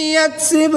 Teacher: با حروف قلقلہ میں سے ہے تو یہاں پر قلقلہ کر کے پڑھیں گے